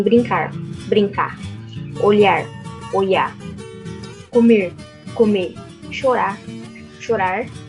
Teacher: A apócope, que é a supressão do fonema no final da palavra, ou que é quando a gente some, vamos dizer assim, com um R.